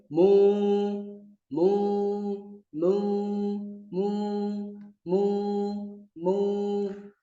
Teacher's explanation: Kemudian bedanya, kalau alif tadi terbuka mulutnya, kalau waw dia itu indhimamun, memonyongkan. Lisyafatain, dua bibir. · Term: indimam